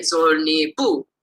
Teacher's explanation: So two friends, food, you'd get zol ni, add this high tone, bu, and you get zol ni bu. And the high tone marks the genitive.